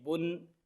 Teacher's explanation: اس کو لمبا نہیں کرنا کہ اس سے واو مدہ پیدا ہوئے، با پیش بون۔